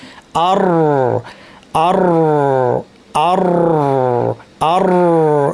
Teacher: সামনাটা একটু ফাঁকা থাকবে, তাহলে র হবে। আর আর আর আর, শুরুতে জিব্বাটা কাঁপবে, যদি আপনি স্ট্রেচ করেন, আওয়াজটা কন্টিনিউ করেন, কাঁপাটা বন্ধ হয়ে যাবে। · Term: রয়ের আওয়াজ